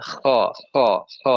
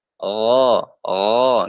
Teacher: kalau Kho ada udara kalau G enggak ada udara